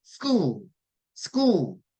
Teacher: 앞에 발음은 으 안 넣고 그냥 그 바람 빠진 소리로